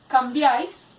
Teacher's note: hay tres vocales juntas en una misma sílaba, una vocal cerrada, una vocal abierta y una vocal cerrada. Se está cumpliendo para hacer un triptongo.